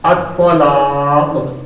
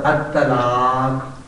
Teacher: طا کو پر پڑھیں گے، تا کو پر نہیں پڑھیں گے